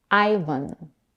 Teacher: Americans pronounce it with a stress on the first syllable, which is the diphthong I as in my. The second syllable, vn, is unstressed and is pronounced with a schwa.